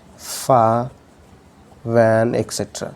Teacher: pressing the lower lip with the upper front teeth, which are called labiodental fricatives.